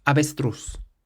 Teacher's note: So we stress the last syllable because it ends in a Z.